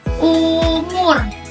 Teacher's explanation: Lidah di belakang atas mulut, bibir dibulatkan.